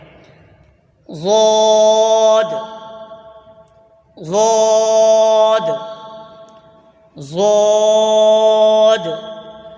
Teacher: जबान की करवट और ऊपर की दाढ की जड़ से अदा होता है · زبان کی کروٹ اور اوپر کی داڑھوں کی جڑ سے ادا ہوتا ہے